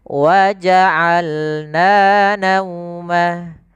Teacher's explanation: Dari tengah tenggorokan kita lafalkan ain.